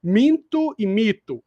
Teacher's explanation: Minto e mito alterou o significado só por causa da vogal nasal